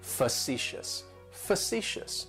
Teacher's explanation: Facetious has 3 syllables and the stress is on that second syllable. It's like you're just saying the letter C, fa-ci-shus.